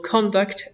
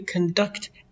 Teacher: Your conduct, accent on the first syllable, or your own behavior is the way you conduct, accent on the second syllable